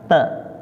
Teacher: letaknya di ujung lidah bertemu dengan pangkal gigi seri atas